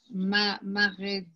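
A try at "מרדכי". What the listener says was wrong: The resh is silent. You say the resh by no vowels. So mar dachai.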